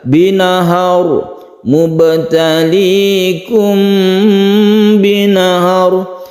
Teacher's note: Binahar mubtalikum binahar, jadi gunnah, kemudian ini ikhfa syafawi kita dengungkan atau kita panjangkan